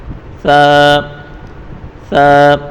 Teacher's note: ثا کو بالکل نرمی کے ساتھ پڑھیں گے، سیٹی والا آواز بالکل بھی نہیں آنا چاہیے اس میں، ثا بالکل نرم پڑھیں گے، ثا ثا۔